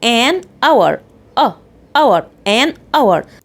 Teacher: انا هنا نطقت اول صوت طلع مني ايه our ده طبعا vowel sound يعني صوت متحرك لان الاتش هنا اصلا silent ما بنطقهاش